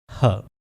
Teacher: Glottal sound है जो आपके गले से प्रोड्यूस होता है। आपके वोकल कॉर्ड्स के दरमियान खाली जगह से जिसे ग्लोटिस कहते हैं। वहां से यह साउंड प्रोड्यूस होगा फ्रिक्शन के साथ।